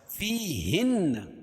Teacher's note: فیہن، یا ساکن سے پہلے زیر ہو تو یا مدہ، اس کو ایک الف کے برابر کھینچ کے پڑھیں گے. اور نون پر تشدید ہے، یہ نون مشدد ہے، یہ غنہ ہوگا